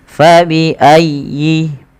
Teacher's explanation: Tekan ya-nya tapi dengan lembut karena ya termasuk huruf lin.